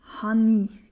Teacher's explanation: HE kann als Hani gesprochen werden. Es wird also ein N quasi als Bindungsglied eingefügt.